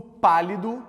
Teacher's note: no pálido fica bastante claro que a sílaba forte é pa